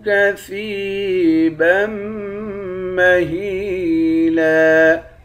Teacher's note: با کو میم مشدد کے ساتھ ملا کر میم پر غنہ کریں گے